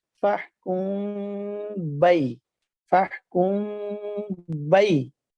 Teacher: وہ اس طرح کے دونوں ہونٹوں کا جو تری والا حصہ ہے اس کو سختی سے دبا کر با کو ادا کرنا ہے۔ جب میم کو ادا کرنا ہے تو خشکی والے حصے کو نرمی سے ملانا ہے اور ساتھ غنہ بھی کرنا ہے، اور پھر اس کے بعد غننے کی مقدار پوری کرنے کے بعد با کو ادا کرنا ہے اور تری والے حصے کو سختی سے دبا کر۔ · ایک الف کی مقدار کے برابر غنہ کرنے کے بعد پھر اس کے بعد با کی ادائیگی شروع کرنی ہے۔ وہ اس طرح کے دونوں ہونٹوں کا جو تری والا حصہ ہے اس کو سختی سے دبا کر با کو ادا کرنا ہے۔